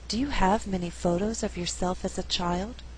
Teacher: In this example, I did not stress the word many. Many is a content word, but because we had too many stressed syllables together, there's a better flow if many is not stressed. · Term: alternate the stress